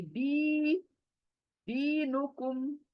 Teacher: دی دال زیر یا مدہ کھینچوں گی